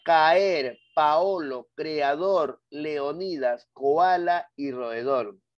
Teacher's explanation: hiato simple las vocales abiertas se separan